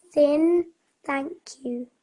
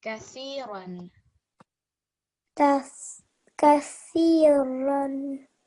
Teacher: So that TH sound is a lot softer compared to the one that comes in Dhal. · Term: letter Tha